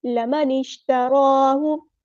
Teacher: नून को हमने शीन के साथ मिला देना है, हमज़ा बस ड्रॉप हो जाएगा